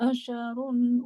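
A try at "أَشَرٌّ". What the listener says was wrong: asyarun. Bukan asyarun. Asyarun. Kenapa? Rohnya bertasydid. Asyarun.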